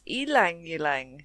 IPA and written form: ˌiːlæŋ ˈiːlæŋ (Ylang-ylang)